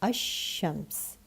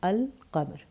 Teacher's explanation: In Shamsi letters, the lam assimilates with the letter, you don't pronounce it.